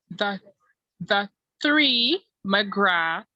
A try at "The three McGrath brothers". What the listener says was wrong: McGrath brothers. You need to learn to pronounce the voiceless TH at the end of the word. It's like mouth. Mouth. Mouth. It's not moat, it's mouth.